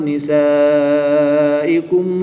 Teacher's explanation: الف مدہ کے بعد حمزہ اسی کلمے میں ہے تو یہاں پر مد متصل ہوگی۔ 3 سے 5 الف تک کھینچ کر پڑھیں گے۔ یہاں پر بھی الف سے پہلے زبر ہے تو الف مدہ ہوگا۔